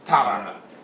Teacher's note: You have the ta, the ah. Before you can pronounce the ta and the ra, there's an ah that exists in the between, which is ah. So ta, ta, ah, ah.